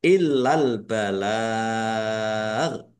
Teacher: lamnya dibaca dobel ada tasdidnya ditekan dan ditahan